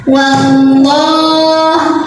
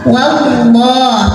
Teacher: Kemudian di atasnya ada tanda waqaf namanya al-waqfu aula yang artinya berhenti lebih baik. Wallah ada lam jalalah yang dibunyikan secara tafkhim. Karena huruf sebelumnya waw bergaris fathah, maka bacanya tebal.